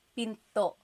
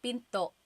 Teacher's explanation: Do you hear the glottal stop when I say pinto? Pinto. So it's not pinto.